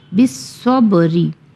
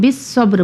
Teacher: بالصبری ہے مگر ہم بالصبر پڑھیں گے کیونکہ وقف کر رہے ہیں